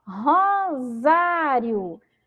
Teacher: também aqui temos a letra se mas com som de z